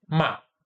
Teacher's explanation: Em mar, esse R, esse rótico, é apagado.